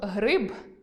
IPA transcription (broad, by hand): г р и б